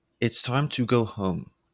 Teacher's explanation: gradually lowering the home, to make it sound final and firm